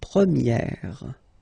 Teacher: Okay, so it's open, this eh sound.